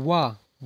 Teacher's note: दांतों का और ओंठों का दोनों का प्रयोग होगा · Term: दंतोष्ठ